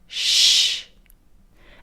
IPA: ʃ